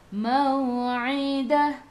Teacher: Ai'u daripada kerongkong, bukan daripada hidung.